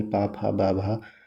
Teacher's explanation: ओष्ठ ध्वनि पा वर्ग में जितने आते हैं